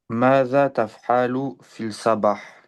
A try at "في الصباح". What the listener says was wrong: Fils sabah. Là, tu fais bien la liaison. تقف بين الياء والصاد. Tu dis fils sabah. Tu dis pas fil sabah.